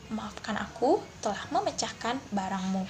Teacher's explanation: Pada intonasi turun diucapkan dengan lambat serta memiliki pemenggalan tanda koma di pertengahan kalimat